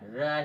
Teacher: ठीक है, उसे बलन होता है, बलन या मुड़ा हुआ होता है, लुंठित होता है, और जिह्वा में कंपन होता है, प्रकंपित व्यंजन कहते हैं।